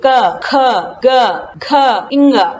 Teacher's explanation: क ख ग घ इंगा ये कंठ से स्पर्श करते हैं। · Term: क वर्ग